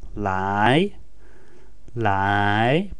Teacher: pronounced in second tone which means to come